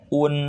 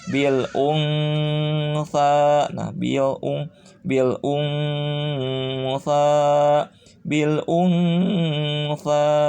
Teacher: Jadi jangan pol ke n. un, tidak boleh un tapi agak-agak ke n, agak-agak ke ang ya, dan pakai dengungan. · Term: disamarkan nunnya